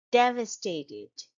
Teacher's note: It's a four-syllable word and the stress is on the first syllable, shown by the arrow here.